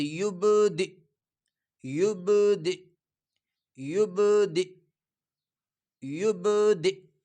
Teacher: وقف کی صورت میں وقف کریں گے تو اس کو ساکن کر دیا جائے گا، اور جب حمزہ ساکن ہو جائے تو اس کو ادا کرتے وقت چھوٹا سا جھٹکا لگے گا